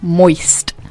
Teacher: People hate it because of that drawn-out gap between the vowels and the very sharp S and T